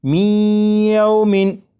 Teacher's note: یہ جو آواز ہے می ای، یہی ادغام ہو رہا ہے، اور ادغام اس طرح کہ نون ساکن کو یا میں شامل کر کے پڑھا جا رہا ہے